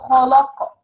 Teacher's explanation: Kha is heavy and the qaf is heavy and between them lam is light.